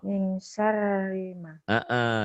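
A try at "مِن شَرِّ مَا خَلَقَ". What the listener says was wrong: Nah, kolkohnya ada khalaq, coba. Shinnya gedein.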